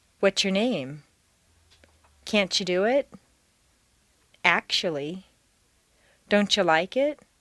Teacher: when the letter or sound of t d s or Z is followed by a word that starts with Y or its sound both sounds are connected these letters and sounds connect not only with Y but they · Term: TDS or Z Plus y